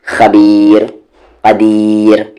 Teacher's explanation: यहाँ पर एक और रूल है कि रा साकिन हो उससे पहले या साकिन हो तो वो रा हमेशा लाइट होगा